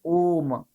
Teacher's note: प्लुत स्वर है जिनको बोलने में 3 मात्रा का समय लगता है